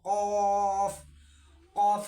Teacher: جب قاف بولیں گے تو بالکل حلق سے نکالیں گے اس کو